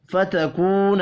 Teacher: واو مدہ اور الف مدہ ہیں، دونوں کو ایک ایک الف کے برابر کھینچ کر پڑھیں گے